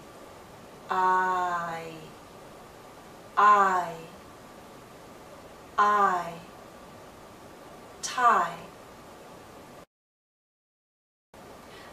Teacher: into e with our lips fully spread but we come close start in a more open position ah and then glide into e